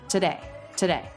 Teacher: And this T can be a true T or a flap T. He is making it a true T.